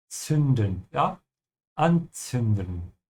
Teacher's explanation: the Z in German, it's pronounced like a TS sound